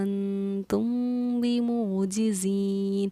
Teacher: یہاں میم ساکن کے بعد با ہے تو ادغام شفی کا ہمارا قاعدہ پایا جا رہا ہے. میم ساکن کے بعد جب با ہے تو اس جوائنٹ پر انتم پر ہم اخفا بھی کرتے ہیں اور غنہ بھی کرتے ہیں